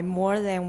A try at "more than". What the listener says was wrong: And watch the N. The first time I think you dropped an N. Try it again.